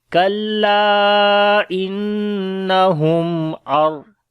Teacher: After the noon sakin, the next letter is ra. We make idgham without gunna, so only we say ar. · so we make izhar shafawi here, the clear sound of mim.